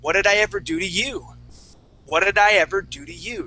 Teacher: when I ask a question my voice goes up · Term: question intonation